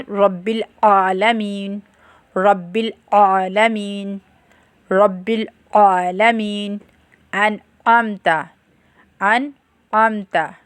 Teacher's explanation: عین کی آواز وسط حلق یعنی حلق کے درمیان والے حصے سے نکلتی ہے